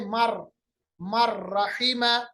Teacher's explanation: नून की आवाज को हमने रा के साथ मदगम किया, मिलाया, और नून की आवाज खत्म हो गई, गुन्ना नहीं हुआ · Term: इदगाम बिला गुन्ना